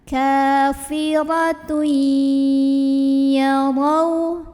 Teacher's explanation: Kafiratun, ada idgham bi gunnah karena ada tanwin dhammah ketemu huruf ya, maka tanwin dhammahnya lebur dengan huruf ya masuk, jadi kafiratui sambil ada dengungannya. Jadi di sini kita tahan kafiratui yarau.